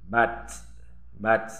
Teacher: Kemudian bat, bat. Ta kalau sukun dia itu berhembus atau hamas atau mahmus.